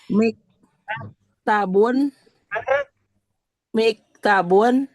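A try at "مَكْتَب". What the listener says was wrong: Maf'alun. Maf'alun, Bu. Bukan mi. Maf'alun berarti ya, terakhir tabun ya.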